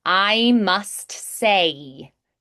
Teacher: In America, I'm exaggerating, but we do the diphthongs a lot more. So think a little more pure vowels, like singing in like a children's choir.